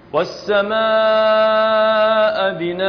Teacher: ننطيها ألف مقدار مده حركتين، سميناه مد العوض، نعوض عن النون عندما نقف عليها بألف